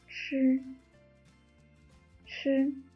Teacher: the tip of the tongue is curled up against the front of the hard palate. Let the strong airflow break the tip of the tongue and extrude from a narrow slit, and form a sound by friction.